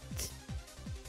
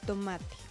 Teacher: La T suena t, es oclusiva, dental y sorda.